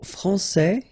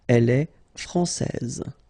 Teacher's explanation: here you get this final S that you don't pronounce, so français, and then when you put this final E here, you will get française. Okay, so français masculin, française.